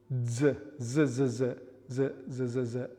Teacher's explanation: voiced dental fricative would be Z